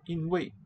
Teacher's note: 因为 sounds like two high tones.